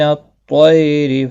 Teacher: تو مستعلیہ ہے، پر پڑھا جائے گا۔ طی یالین ہے، تھوڑا نرمی کے ساتھ کھینچ کر ادا کریں گے، را زیر کی وجہ سے باریک پڑھا جائے گا۔